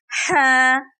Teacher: جیسا کہ آپ پکچر میں دیکھ سکتے ہیں کہ اس ہا کی ادائیگی ہم حلق کے درمیان سے کریں گے